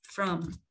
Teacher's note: Bây giờ mình sẽ giới thiệu với mọi người cái dạng yếu của cái chữ from ha. Khi mà mình đọc, mình không có nhấn mạnh nó thì mình không có đọc là âm A, mà mình đọc là âm Ơ. Âm Ơ mình lướt qua luôn.